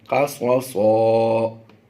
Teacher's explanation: آیت مکمل ہو رہی ہے تو 2 زبر کی تنوین کو ہم نے 1 زبر پڑھتے ہوئے الف مدہ بنا دینا ہے